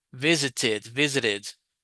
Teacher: in the case of visit, this ed sound has an id sound. So visit, visited, did, visited.